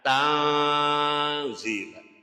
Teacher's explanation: Kemudian zi dibaca panjang. Ada harokat kasro bertemu dengan iya sukun, itu hukumnya dibaca mad asli atau mad tobi'i, panjangnya 1 alif atau 2 harokat.